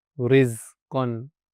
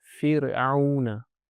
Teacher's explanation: the Ra is pronounced lightly, Tarqeeq, when it has a kasra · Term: lighter sound of Ra